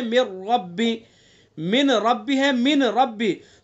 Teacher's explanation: جیسے من ربی، من ربی ہے، من ربی، تو نون کا را میں ادغام کیا تو پہلا حرف دوسرے حرف سے مکمل بدل گیا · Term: ادغام تام